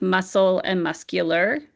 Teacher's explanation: In muscle, we know the C is silent, but in muscular, you're hearing the sound of the C for muscular.